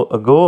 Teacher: the English word ago has the accent on the second syllable, यानी पहला है, दूसरा गो है।